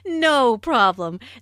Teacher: Notice the stress on no. The receptionist laughs first, then puts emphasis on no by lengthening the word.